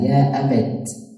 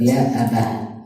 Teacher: Abati, here we said in the notes it says Ibn Kathir, Ibn Amir, Abu Ja'far, and Ya'qub would stop at the ta. If they pronounce, they will pronounce it as ta, ya abat, instead of ya abah. The others would say abah.